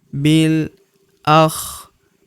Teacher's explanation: huruf ri kita panjangkan dua harakat karena terdapat ya sukun di depannya